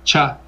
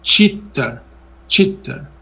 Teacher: são palatal a língua vem aqui no céu da boca